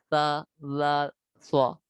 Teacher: حروف لساویہ زبان کا سرا اور اوپر کے دانتوں کے اندرونی کنارے سے ادا ہوتے ہیں